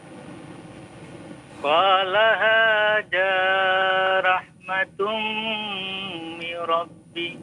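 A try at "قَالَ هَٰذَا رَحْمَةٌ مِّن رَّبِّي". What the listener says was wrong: Tasydid ditahan. Ya, mir rabbi ya. Coba ulangi lagi. dua harokat. Qala hadza dua harokat.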